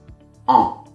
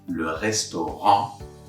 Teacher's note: So I open my mouth wider as if I was saying A, and then I close it a little bit to get that nasal sound. So if I say le restaurant, sounds like en.